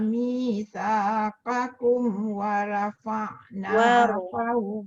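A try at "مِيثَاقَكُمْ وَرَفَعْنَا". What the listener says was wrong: Ada dua tempat tu Datuk kena betulkan sikit. Satu qaf, satu ra.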